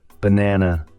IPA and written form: bəˈnænə (banana)